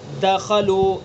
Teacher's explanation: دال کے اندر قلقلہ ہے، متحرک ہے دال، قلقلہ ہوگا اس کے اندر لیکن کم درجے کا قلقلہ ہوگا